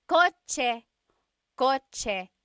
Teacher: The ch sound is a TS combination.